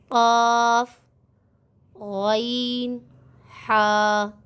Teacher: یہ ہمارے گلے کے حلق یعنی حلق کے شروع میں سے ادا ہوتے ہیں